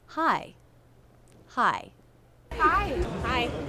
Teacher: Look at that jaw drop we have on the I as in by diphthong.